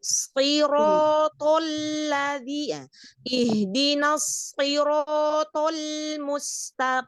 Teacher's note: Huruf sod itu hurufnya itobaqo, lebih tebal daripada isti'la. Jadi ketika dia kasroh, ketebalannya nggak boleh hilang. Karena kalau hilang, huruf bisa tertukar.